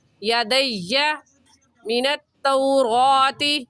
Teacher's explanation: یا کے اوپر تشدید ہے، اور تشدید کو سختی کے ساتھ ذرا رک کر پڑھتے ہیں. ایسے کہیں گے یدی من التوراۃ.